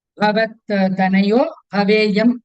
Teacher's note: Bhavat, both Bha are Mahaprana here.